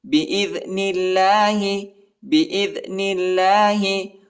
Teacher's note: اللہ کے نام کو باریک پڑھیں گے، نرم پڑھیں گے